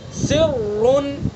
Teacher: یہ راں مشدد ہے اور اس کے اوپر پیش ہے تو اس لیے راں پر پڑی جائے گی